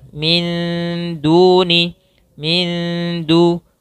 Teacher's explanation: disamarkan huruf nunnya ke dal. Karena dia di sini bacaan dalam ilmu tajwid namanya ikhfa.